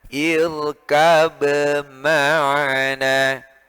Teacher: Kalau tidak gunnah, irkab ma'ana, dibaca izhar, jelas. Tapi karena ini hurufnya berdekatan, ya, makhrajnya sama, kemudian sifatnya berbeda, maka diidghamkan.